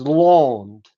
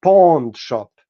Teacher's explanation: They insert d even after every final n, even those n sounds which were never followed by d.